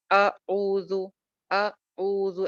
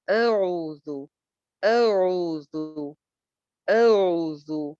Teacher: ऐसे हमज़ा को झटके के साथ कभी भी नहीं पढ़ते। नरमी के साथ पढ़ते हैं।